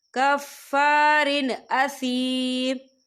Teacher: یہ دیکھیے کفارن، را کے نیچے تنوین ہے اور تنوین کے بعد جو ہے حمزہ آ رہا ہے، اور حمزہ جو ہے حروف ہلکی کا ورڈ ہے تو ہم یہاں اظہار کریں گے اور ہم اسے بنا غننے کے پڑھیں گے